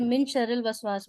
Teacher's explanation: نون ساکن کے بعد جب شین آئے تو نون ساکن کی آواز کو چھپا کر پڑھتے ہیں